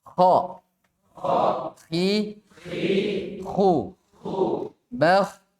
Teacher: kita sebut dulu kha di tenggorokan paling atas